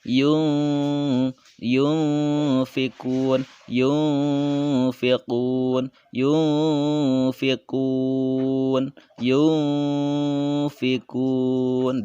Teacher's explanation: Cara membacanya yaitu dibaca samar dan dengung atau menjadi suara n atau ang ya. Nah, ketika kita menyebutkan nunnya itu kedengaran suara n atau ang ketika dibaca. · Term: ikhfa